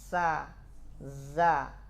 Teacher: Sama-sama istifal. Semua suaranya diarahkan ke bawah.